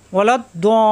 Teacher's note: তাজদিদ আছে 2 বার পড়তে হবে, লাম 2 বার পড়তে হবে